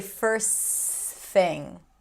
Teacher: When the T appears between two consonants, it's okay to drop it.